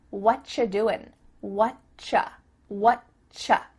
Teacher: we've cut out completely the word are, and the word you just becomes cha.